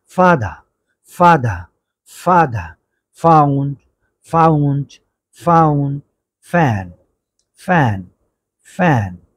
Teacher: উপরের দাঁত নিচের ঠোঁট স্পর্শ করে উচ্চারণ করব, অর্থাৎ এফ, এফ, উপরের দাঁত নিচের ঠোঁটে উচ্চারণ করব।